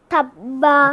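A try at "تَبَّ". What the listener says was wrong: Okay, you need to pronounce twice, okay? Tabba.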